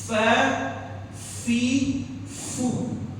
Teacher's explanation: Huruf fa ini makhrajnya adalah gigi bawah kita, gigi seri bawah.